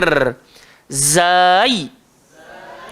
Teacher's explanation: Baik, jadi huruf zai, cara sebut dia lagu mana? Hujung lidah, langgar di belakang gigi bawah, dan sifatnya kena berdesir.